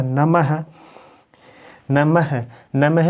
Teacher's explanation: विसर्ग जो है वो आपका कंठ से भी बोला जाता है